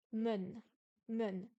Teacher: Le E et le N se prononcent séparément, comme un en français.